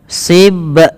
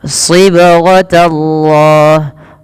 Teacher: cara membacanya dipantulkan sembari mengalir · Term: qalqalah